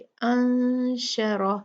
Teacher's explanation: सुम्मा शाअ, ये मैंने आपको बता दिया, मद मुत्तसिल वाजिब है, 4 काउंट पढ़ेंगे, शा को 4 काउंट खींचेंगे। अंशरह, नून साकिन के बाद शीन है जो इख्फा हरूफ में से है, तो नून का हम यहाँ पर इख्फा करेंगे